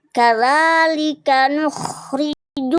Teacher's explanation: ada ra berharokat kasroh, namanya ra tarkik ya, dia dibaca tipis